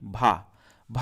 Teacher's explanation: घोष भी है, स्पर्श भी है, महाप्राण भी है